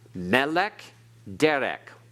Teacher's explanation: It is milael, not milra. Therefore, the accent is put on the next to last syllable.